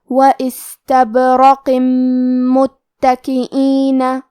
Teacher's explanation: استبرق، آخری میں حرف القاف ہے، قاف کی ادائیگی زبان کے جڑ اور تالوں کے نرم حصے سے ہے، قاف حروف التفخیم میں سے بھی ہے تو ہم یہ حرف کو موٹی آواز میں پڑھیں گے کیونکہ اس کے نیچے تنوین زیر ہے، پھر حرف المیم ہے کلمت متکئین، یہاں حکم ہے ادغام بغنہ تو ہم یہ حکم کو غنہ اور تشدید کے ساتھ ادا کریں گے۔ · کلمت متکئین میں تا کے تشدید کو ظاہر کریں گے